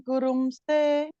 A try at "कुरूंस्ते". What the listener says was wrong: குரும்ஸ்தே, ரூ வந்து தீர்க்கம்.